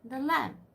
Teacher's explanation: Iambic, unstressed and stressed syllable.